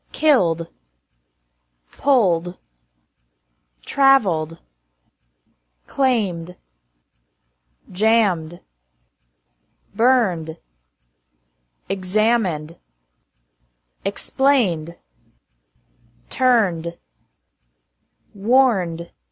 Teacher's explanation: ED is pronounced like D after verbs ending in an L, M, or N sound.